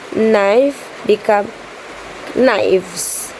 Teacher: Voicing change f become v